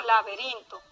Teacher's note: El acento ahí es rin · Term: acento prosódico